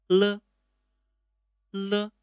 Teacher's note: L is the air coming out from both sides of the tongue.